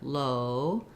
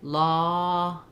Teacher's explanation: they're both round but o is a little tenser low law because it's a little more open · our o is a gliding diphthong and our ah is a little more open they're both round but o is a little tenser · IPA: /oʊ/